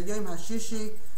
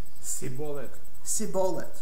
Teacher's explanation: they couldn't say a shin, they said a sin